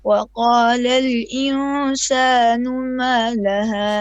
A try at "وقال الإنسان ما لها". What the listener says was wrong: Make your ikhfa on the insanu. Make it a bit longer.